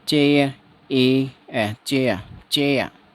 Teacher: रे नहीं बोलेंगे, रे लास्ट में आ रहा है तो इसको ब्रैकेट में लिख देंगे, ठीक है। जो ब्रिटिश डिक्शनरी ब्रिटिश लैंग्वेज होती है उसमें इस रे का उच्चारण नहीं किया जाता, लेकिन जो अमेरिकन बोलते हैं उसमें रे का उच्चारण करते हैं।